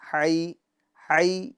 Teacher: ہا یا زبر ہئی، ہئی۔ یا بولتے وقت آواز پستی کی طرف جائے گی، ہونٹ تھوڑے پیچھے کی طرف جائیں گے تو خود بخود آواز پستی کی طرف چلی جائے گی، نیچے کی طرف چلی جائے گی۔